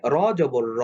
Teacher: র যবর র এটা এখানে অ সাউন্ড আসছে আমরা বলছি র কখনো মোটা হয় কখনো পাতলা হয় এখানে জবর আসার কারণে এটা মোটা হয়েছে